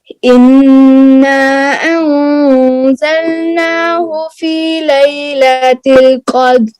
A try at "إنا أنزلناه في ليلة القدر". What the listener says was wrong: قدر، را کی آواز آئے. قدر.